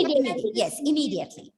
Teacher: no need of stressing on that M. You have to just pronounce the word softly, immediately.